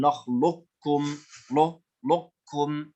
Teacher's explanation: تبقى صفة الاستعلاء في القاف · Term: إدغاما ناقصا